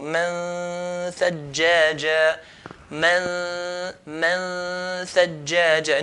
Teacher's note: Okay, and the roof of the tongue and where the tha is articulated from will come very, very close. Nun will be forgotten, will be hidden. So just the ghunna sound.